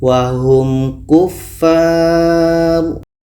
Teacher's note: Ini izhar syafawi, maka mim jelas, ka jelas dan tidak ada dengung.